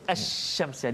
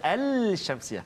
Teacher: Jadi dua contoh yang kita kongsikan pada hari ini, contoh lam asy-syamsiyah. Kita sebut pun dia dah bunyi idgham tu asy-syamsiyah, dia tak ada al-syamsiyah